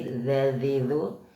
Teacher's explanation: ujung lidah bertemu gigi atas lidahnya keluar sedikit